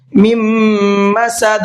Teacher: دال کے اندر قلقلہ کریں گے اس لیے کہ وقف کرنے کی حالت میں دال ساکن ہو جائے گا